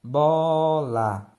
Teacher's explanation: O O é a vogal mais forte. É a vogal tônica e o A a vogal átona.